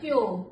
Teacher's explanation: ओ की आवाज मुख से निकल रही है केवल